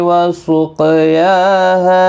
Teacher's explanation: وسقیاها قاف مستعلیہ ہے، پور پڑا جائے گا، ساکن ہے، قلقلہ بھی ہوگا، یا کے اوپر کھڑی حرکات ہے، ہا الف مدہ ہے، دونوں کو ایک ایک الف کی مقدار کے برابر کھینچ کر پڑھیں گے